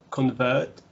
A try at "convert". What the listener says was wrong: Make this a schwa. Not convert, but convert.